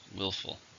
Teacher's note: How many syllables are in willful? 2. Stress on the first.